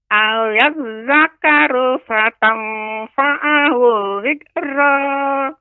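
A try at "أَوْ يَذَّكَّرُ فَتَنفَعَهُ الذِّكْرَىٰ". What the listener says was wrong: Ya, di sini Nek masih kurang jelas lagi, lebih diperjelas ya untuk kaf, tasydid pada kaf. Au yazakkaru. Au yazakkaru fatanfa'ahu dzikra.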